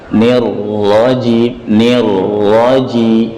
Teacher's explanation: Nirra, sudah kita sampaikan ra bertasydid kemarin. Pengucapan ra bertasydid dilarang membacanya dengan mantul.